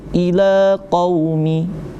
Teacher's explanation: Maka dibacanya satu alif dua harakat ya. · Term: mad tabi'i